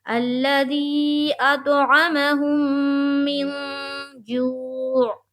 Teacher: یہاں عین حذف نہیں ہونا چاہیے، عین کی آواز آنی چاہیے، سمجھ میں آنی چاہیے کہ ہم لفظ عین، حرف عین وہاں پڑھ رہے ہیں.